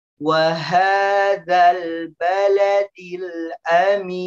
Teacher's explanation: huruf nun yang berada di akhir dimasukkan ke dalam hidung, tapi cuma sedikit aja ya, nggak boleh banyak-banyak ya.